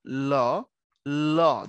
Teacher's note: সামনের দিকে জিহ্বাটা আটকায় দিচ্ছে শাটারের মত ঠিক আছে দোকানের শাটার যেরকম আটকায় রাখে ওরকম দেখো ল আটকায় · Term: পারসিক বর্ণ